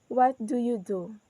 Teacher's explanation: So our voice is goes down in the word do. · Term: falling intonation